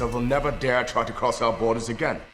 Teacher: i for example say dare with just one long vowel but he goes for the more classical version of dare with an uh on the end